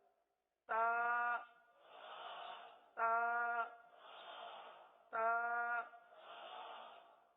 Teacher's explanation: یہ حروف نطعیہ ہیں. زبان کی نوک اور اوپر کے دانتوں کی جڑ سے ادا ہوتے ہیں